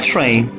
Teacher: Ra is voiceless following ta in train, which is longer.